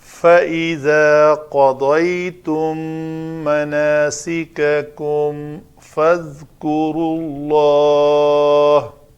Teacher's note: آگے پھر میم کے بعد فا ہے تو یہ اظہار شفوی ہے